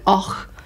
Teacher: Scottish accents can be stronger and more guttural often. We use a lot of ch, a bit more like och.